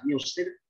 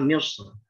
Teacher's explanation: bisa Misr dengan tarkik atau dibaca dengan Misr ketika dibaca tafkhim? Ini bahasanya ketika waqaf ya. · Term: wajahan